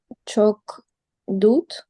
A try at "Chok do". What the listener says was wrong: Just do, but that last D is silent. Chok do.